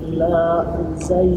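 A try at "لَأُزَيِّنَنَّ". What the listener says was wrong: Enggak, jangan dipanjangin. La uzayyinan.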